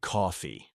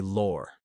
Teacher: They don't talk about the law, they say lore. It's all about that stretched aw sound.